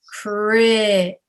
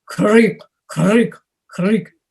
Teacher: So you say kri, it's all up in the front of the mouth, whereas in Russian and Ukrainian it's krik, krik, krik. It's in the back of the mouth. You want to say crick.